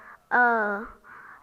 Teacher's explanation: the mouth is quite relaxed it's not far open it's not wide it's not rounded it's relaxed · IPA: ɜ